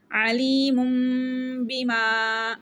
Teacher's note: یہاں پر اقلاب ہو رہا ہے، غنہ کریں گے